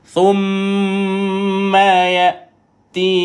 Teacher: Tekan dan lepaskan bunyi tuan-puan pada tha. Ujung lidah dikeluarkan pada thumma.